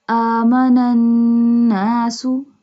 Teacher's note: Join the both noon because the next noon has tashdid and do gunna. Gunna means your voice comes from nose.